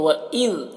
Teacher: آواز ٹکرائے گی نہیں بلکہ آواز ذال میں رک جائے گی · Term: قلقلہ نہیں کرنا